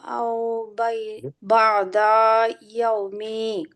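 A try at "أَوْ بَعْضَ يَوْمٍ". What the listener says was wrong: না, আও বাদা ইয়াও, যেটা আমি এখানে থেমে যাব, ইয়াও। আমাদের কথা ছিল যে তানভিনের ওখানে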